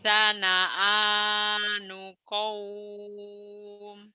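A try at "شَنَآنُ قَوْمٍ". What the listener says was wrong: Shin, shinnya nggak keluar. Syana'a, syana'a, syana'a, syana'anu qaum. Syana'a, syana'anu qaum. Syana'a, syana'anu qaum.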